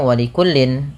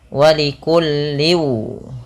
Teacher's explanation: ketika tanwin bertemu waw, ini usahakan dimasukkan kepada huruf waw, ya, karena bacanya dimasukkan, dan ini kita kenal dengan istilah namanya idgham.